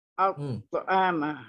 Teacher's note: makhraj dia hujung lidah pergi ke tempat pertemuan gigi dan gusi atas. Okey, kemudian sifat dia tebal tertutup. Al-ta'ama. Okey, kemudian dia ada lantunan.